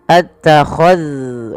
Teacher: hati-hati di dalam melafalkan zal yang sukun, jangan sampai ia dipantulkan ya teman-teman. Jangan mantul, jangan qul attakhadhtum.